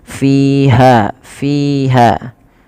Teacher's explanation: fi dan ha kedua-duanya mad thabi'i. Yaitu panjangnya dua harakat.